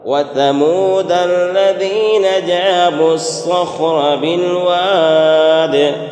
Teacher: صخرہ میں جو را ہے یہ را پور ہوگی، را پر زبر ہے اس بنا پر